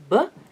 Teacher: ba is a voiced bilabial stop